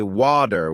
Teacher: In American English, people might say water with a D sound, while in British English it's often watu with a T sound.